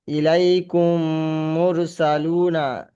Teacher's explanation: প্রথম মিমটা দ্বিতীয় মিমের সঙ্গে মিলে দ্বিতীয় মিমটা পড়তে হবে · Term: গুনা